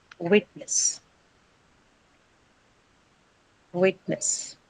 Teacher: It's a disyllabic noun, of course, on the first syllable.